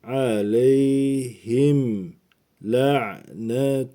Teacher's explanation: Le'yi ayin harfine sert bir şekilde bağlayalım. Le kırtlağımızın aşağısını kasarak le netullahi Allah isminden önceki harf üstünlü ve türeli olursa Allah ismi la diye okunuyor.